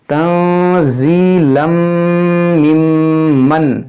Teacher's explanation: यहाँ तनवीन के बाद मीम यहाँ पर इदगाम करेंगे